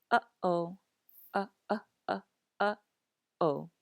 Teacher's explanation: The okina is often called a glottal stop, and the best way to describe it is with the word uh-oh. Do you hear the back of your throat closing before each of these vowels?